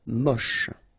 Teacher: Don't insist on the final E, then you get the last sound is sh.